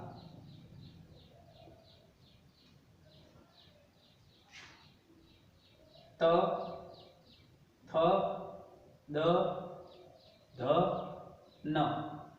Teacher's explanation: इसका उच्चारण स्थान दांत, और इसको कहते हैं दंत्य व्यंजन।